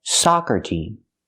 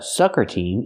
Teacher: for soccer we need the open Sound ah like hot and stop